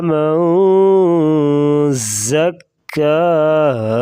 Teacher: ناک میں آواز چھپا کر غنہ کریں گے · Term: اخفا